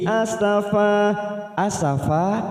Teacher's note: asafa mat iwat kita panjangkan 2 harokat